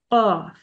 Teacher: there's no air coming out while I'm saying it. My tongue is touching my throat while I'm saying it.